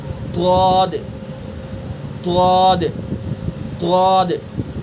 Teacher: زبان کی نوک کو بھی دانتوں پر ٹچ ہونے سے بچا کر کے رکھیں اور کنارے کو بھی ٹچ ہونے سے بچا کر کے رکھیں. خالی زبان کی کروٹ کو اوپر کی ڈاڑوں پر لگانا ہے اور پھر ادا کرنا ہے ضاد, ضاد, ضاد.